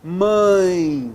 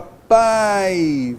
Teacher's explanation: Por isso nós temos o chamado ditongo decrescente. Ora, se eu tenho vogal e na sequência uma semivogal, o som decresce